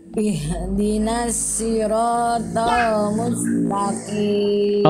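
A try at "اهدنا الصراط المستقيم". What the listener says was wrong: PR huruf shad Bunda masih dilafalkan seperti huruf shin atau huruf sin.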